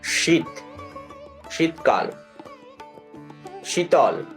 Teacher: এবার তালব্য স, এটা তালু থেকে উচ্চারিত হবে। তাহলে জিভটাকে তালুতে নিয়ে যেতে হবে। তালু বলতে আমরা বুঝি যে যেটা দাঁতের মাড়ি আছে উপরের দিকে, তার ওপরে বা মাড়ির ওই জায়গাটি তার আরেকটু উপরে, সেটাকে আমরা তালু অংশ বলে থাকি।